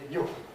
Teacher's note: has a weak form, which is not very weak in RP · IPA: [ju]